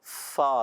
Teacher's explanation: جی ہاں پیارے بچے اور مدنی چینل کے ناظرین، یہ فا کا مخرج ہے، اوپر کے دانتوں کے کنارے جب نیچے والے ہونٹ کے تر حصے سے یعنی گیلے حصے سے لگتے ہیں تو ادا ہوتا ہے فا